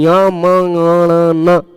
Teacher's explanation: मुंह और नाक दोनों से इनका उच्चारण होता है, इस कारण ये अनुनासिक है